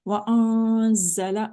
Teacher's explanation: زا میں ہم سٹی کر رہے ہیں چونکہ یہ وسلنگ لیٹرز میں سے ایک ہے